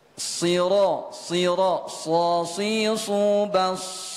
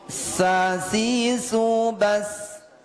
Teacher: sama dengan Sin ujung lidah mengenai ujung gigi seri bawah tetapi bedanya kalau huruf Shad ini tebal mengangkat lidah · Tetapi bedanya kalau huruf sad ini tebal, mengangkat lidah, dan ini merupakan huruf tebal. Sementara huruf sin tidak.